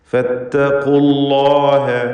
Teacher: ഫത്തഖുല്ലാഹ ഖാഫിന് തഫ്ഖീം കൊടുക്കണം. അതുപോലെ അല്ലാഹ് എന്ന ഇസ്മുൽ ജലാലയിലെ ലാമിനെയും തടിപ്പിച്ച് ഉച്ചരിക്കണം